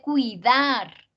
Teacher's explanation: en cuidar el acento está en la otra sílaba la que no tiene las vocales juntas